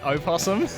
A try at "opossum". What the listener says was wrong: That sounds like you're saying possum.